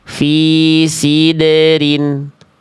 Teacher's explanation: Jadi pantulan dalnya jangan sampai kayak ada bunyi hamzah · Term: dal sukun